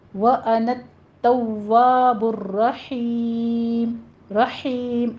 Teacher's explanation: وَأَنَا التَّوَّابُ الرَّحِيمُ میں بھی آپ نے را کی تکرار ہوگی 2 دفعہ اور را کو پر پڑھنا ہے۔ وَأَنَا التَّوَّابُ الرَّحِيمُ رحیم ہا کی آواز باریک وسط حلق سے نکلے گی۔